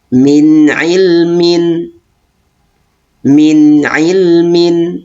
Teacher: Jadi nun sukun tersebut dibaca dengan jelas, tidak boleh didengungkan atau ditahan. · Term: idhar halqi